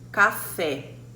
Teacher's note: uma palavra oxítona, ela vai ter a última sílaba forte da palavra. No caso aqui, ó, café. · o fé é a sílaba tônica e ela pode ver, é a última